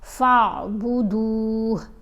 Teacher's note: ان اللہ ربی وربکم فاعبدوہ، یہاں پر یہ وقف ہے، یہ جو طا لکھا ہوا ہے نا، اس کا مطلب ہے کہ وقف کرنا چاہیے یہاں پر۔ اگر وقف کریں گے تو ہا کو ساکن پڑھیں گے، اس کے اوپر جو پیش ہے وہ نہیں پڑھی جائے گی